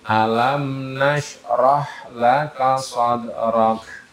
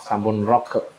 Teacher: Kaf kalau di kaf mati itu angin keluar.